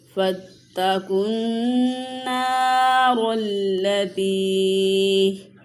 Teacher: واؤ پہ کوئی حرکت نہیں ہے، واؤ نہیں پڑھا جائے گا، قاف کو نون کے ساتھ ملا کے پڑھیں گے۔ نون مشدد ہے، یہاں پہ ایک الف کے برابر غنہ کریں گے، آخر میں یائے مدہ ہے، اسے بھی کھینچ کے پڑھیں گے۔ · وَلَن تَفْعَلُوا فَاتَّقُوا النَّارَ الَّتِي جی واؤ پہ کوئی حرکت نہیں ہے، واؤ نہیں پڑھا جائے گا، قاف کو نون کے ساتھ ملا کے پڑھیں گے۔ نون مشدد ہے، یہاں پہ ایک الف کے برابر غنہ کریں گے